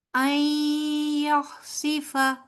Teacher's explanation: نون ساکن کے بعد آگے یا آ رہا ہے اور یا جو ہے وہ مشدد ہے، تو یہاں پر نون جو ہے وہ سائلنٹ ہو جائے گا